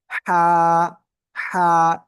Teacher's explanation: তো আমরা এই যে হা অক্ষরটা শিখতেছিলাম, এই হা অক্ষরটা আপনার গলার মধ্যখান থেকে আমরা চেপে উচ্চারণ করবো, আর মুখ দিয়ে হালকা ঠান্ডা বাতাস বের বের হবে।